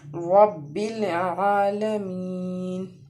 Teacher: اس کے بعد ہے عین، عین جو ہے وہ بھی حروف حلقی کا حرف ہے، جیسے ح ادا کیا تھا ویسے ہی اسی مخرج سے عین ادا ہوگا۔ عین کے اوپر کھڑا زبر ہے، اس لیے اس کو ایک الف کے برابر ہم کھینچ کے پڑھیں گے